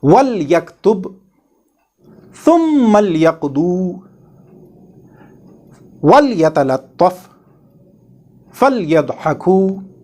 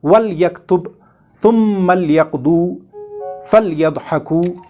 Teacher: This LAAM has to be pronounced with Izhar. That means it has to be pronounced with clarity, without hiding or dropping it.